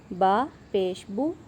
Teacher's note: آپ نے اس کو با کو لمبا بھی نہیں کرنا اور جھٹکا بھی نہیں لگانا